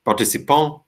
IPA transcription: partisi'pã